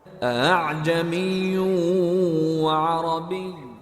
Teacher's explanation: تلاوت کرنے والے نے علامت پر حمزہ کا تلفظ رکھا ہے اور اسے اعجمی پڑھا ہے۔ اسے تسہیل کا قاعدہ کہتے ہیں۔